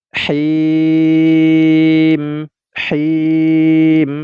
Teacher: Huruf mim ini karena waqaf tidak lagi dibaca mi, tetapi kita matikan. Ya, kita matikan sehingga ini hukumnya menjadi mad arid lisukun.